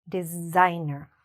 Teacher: We see an s, but the s sounds a little bit more like a z or zed